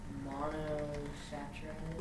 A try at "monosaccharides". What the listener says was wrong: Yeah, pronounce it like a sack. Monosaccharides. We don't pronounce the H, okay?